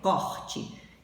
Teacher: o O da sílaba tônica é com som aberto